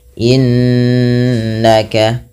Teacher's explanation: cara membacanya menahan bunyi suaranya sepanjang dua harakat innaka tidak hanya sekedar innaka tapi ditahan anta anta ya ada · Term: gunah